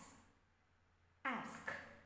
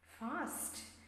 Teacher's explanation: so it is near open front unrounded vowel